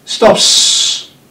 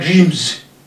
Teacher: Because consonant P is voiceless and consonant M is voiced.